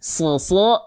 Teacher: SH tadi sudah huruf Shad itu sama seperti Huruf Sin ya cara melafalkan huruf Shad itu sama persis seperti kita melafalkan huruf Sin Sas Sisi susu tapi pangkal lidahnya diangkat suu iya jelas paham sampai sini oke lanjut Nah selanjutnya bnya